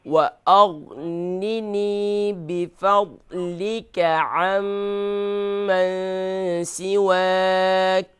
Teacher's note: बिफ़ज़लिका यहाँ पर ज़ाद है, इसे फुल माउथ करेंगे